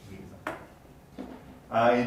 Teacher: So if you have a T before an unstressed word, we also have flapping.